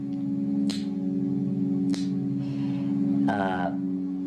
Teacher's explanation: I use what they call a palatal tongue click